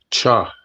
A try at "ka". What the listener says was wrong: Okay, so this one you're seeing the CH, but this one will be pronounced like ka. Ka.